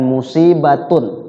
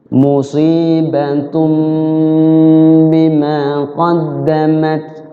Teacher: iqlab iqlab artinya apa I terbalik atau berubah ya berubah jadi tanwinnya berubah jadi mim ada mimnya di ba di situ